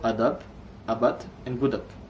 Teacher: you can hear how weak the consonants in the final positions are compared to the consonants in the initial and medial positions. · If the consonant is at the end of a word, the plosion of b, d, and g is very weak, and often sounds like their voiceless plosive counterparts, which are p, d, and k.